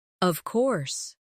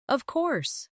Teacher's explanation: When they are certain, their voice goes down strongly.